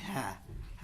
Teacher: स्वर यंत्रीय, कंठ के भीतर से, जैसे कि है को बोलते हैं सारा भार कंठ पर ही पड़ता है